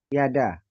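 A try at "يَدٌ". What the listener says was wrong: Bukan. Lihat gimana bentuknya yang lain tadi. Mufrad yang lain itu gimana bentuknya? Ada kesamaan. Sudah betul makna hurufnya, cuman harokatnya lagi. Yadun, dua tangan.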